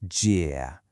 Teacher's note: Your pitch has to go down and then back up. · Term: third tone